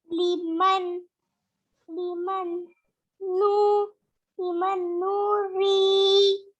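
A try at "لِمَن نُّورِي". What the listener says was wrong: जी नून को खींचेंगे नहीं, पेश है इसके ऊपर, लिमन नूरी,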